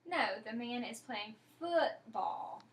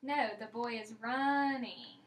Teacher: she's going to put stress on the word that she has corrected in the sentence